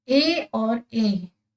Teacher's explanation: उच्चारण स्थान वो कंठ और तालव्य दोनों से है इसलिए हम इसे कंठ तालव्य कहेंगे